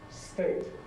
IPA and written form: steɪt (state)